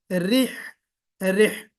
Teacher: रिह, यहाँ पे रा के अंदर जो है वो सिफत तकरीर भी होनी चाहिए, और रे नहीं, मजहूल नहीं होना चाहिए, बल्कि रिह, रिह।